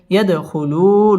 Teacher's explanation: দাল কলকলার হরফ ধাক্কা দিয়ে পড়তে হবে